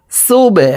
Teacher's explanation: সুবহানাল্লাহি ইলামকে ল অর্থাৎ মোটা করে পড়তে হবে।